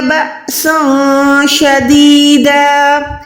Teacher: کیونکہ یہاں پر سین 2 زبر کے بعد شین ہے، شین حروف اکفا میں آتا ہے۔ جب بھی اکفا کا قاعدہ ہوتا ہے تو ہم نے تنوین یعنی 2 زبر کو یہاں پر ہم نے چھپانا ہے